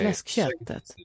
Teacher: And it's not a long K. The first K belongs to the component fläsk, where it is still a K.